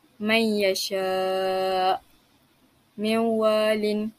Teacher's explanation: Imam Khalaf membaca dengan idgham tapi tidak memasukkan dengung padanya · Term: meninggalkan dengung